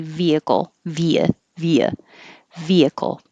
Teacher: do you have to have a good h in the middle no you don't